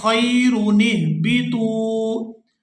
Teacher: تو یہاں ہم الف خالی کے نیچے زیر لگائیں گے جب ہم یہاں خیر پر وقف کر دیں گے، اور اگر ہم یہاں پر خیرو یہاں وقف نہیں کرتے تو پھر نون کو زیر کے ساتھ ہا ساکن کے ساتھ ملائیں گے